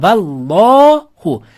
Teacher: Alloh lafzi o'zdan oldingi so'zga fatha yoki domma bilan ulansa, Alloh lafzini lami lov o'qiladi.